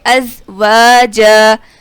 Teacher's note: زا میں ہم سیٹی کی آواز نکالیں گے